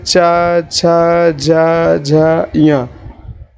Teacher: च वर्ग के जितने भी अक्षर होते हैं दोस्तों उनका जो उच्चारण स्थान होता है वो तालव्य होता है